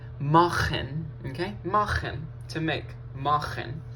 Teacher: Remember in the first video, we concluded that if CH follows a dark vowel, or it's called a dark vowel in some cases, but follows an A, O, or a U, it makes an ach sound from the throat. So in this case, this verb is going to sound like machen, okay?